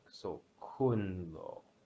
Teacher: kun is a falling tone coming from 4 to 1, the one part is what the lo would sound like. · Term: neutral tone